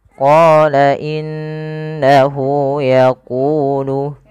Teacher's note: pada lafal qo kita panjangkan bunyi qo sepanjang dua harakat karena pada lafal qa ada bacaan Mad Thobi'i yaitu qnya bertemu